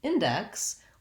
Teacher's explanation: we have first syllable stress so the in part is actually stressed here